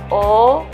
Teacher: vokal bulat Kenapa dikatakan bulat karena bibirnya bulat